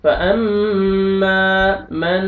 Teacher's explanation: میم مشدد ہے، غنہ کرنا ہے آپ نے، نوز میں ساؤنڈ لے کے جائیں گے